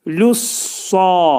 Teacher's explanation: Mi burada incə samitlər qrupuna aiddir. Lussa, sa hərfi qalın oxunur. Təşdidlidir.